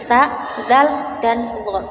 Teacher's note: Nithawiyah yaitu makhrajnya huruf yang terdapat dalam gusi